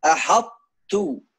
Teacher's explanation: Ta di dalam ta harus idgham, masuknya ta di dalam ta, tapi harus ada tebal ta karena ta kuat. Setelah tebal ada ta. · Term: idgham mutajanisain